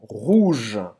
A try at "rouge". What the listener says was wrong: Então presta atenção que não é rouge. Faz S-O-U. Em francês tem simplesmente o som de U em português. Você não vai falar rouge, não vai falar rouge. Não pronuncia esse E no final. Você vai terminar nesse J, J aqui do G. Rouge.